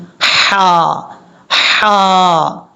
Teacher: اس ہا کا تعلق گلے کے درمیان کے ساتھ ہے.